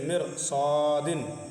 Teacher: را ساکن سے پہلے زیر ہو، را ساکن کے بعد حروف مستعلیہ ہو تو پھر کیا کریں گے، اس را کو پر پڑھیں گے